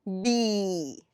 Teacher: we stop the airflow at the lips and we release it with the vowel let's say e so we get B right the next one